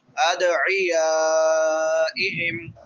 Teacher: دال حروف قلقلہ میں سے ہے، اس کو ہلا کے پڑھیں گے